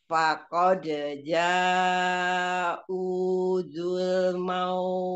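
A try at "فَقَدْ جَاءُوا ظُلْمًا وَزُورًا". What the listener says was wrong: Di sini bukan za, tapi zai. Wazuro. Wazuro.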